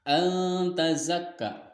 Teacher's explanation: cara membacanya samar dengan didengung dan ditahan 3 harokat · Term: ikhfa